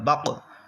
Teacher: یہاں پر قوف ساکن آ گیا حروف قلقلہ میں سے، اس لیے قلقلہ خوب ظاہر ہوگا